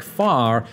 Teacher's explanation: Rhoticity specifically relates to the pronunciation of R. Most Americans today sound out the R in words like far, whereas most English people don't.